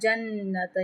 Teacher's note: جنت یہاں پہ نون مشدد ہے، ایک الف برابر غنہ کریں گے